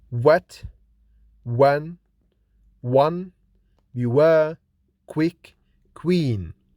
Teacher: This bilabial approximant is articulated with rounded lips